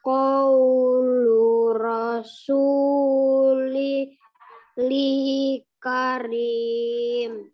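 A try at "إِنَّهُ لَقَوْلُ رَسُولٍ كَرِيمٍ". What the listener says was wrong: itu rasuli atau rasuling kak? Lin atau li? Ayo, kasroh atau kasroh tanwin itu. Coba ulang lagi. Innahu. Ling dengung. Rasulil karim.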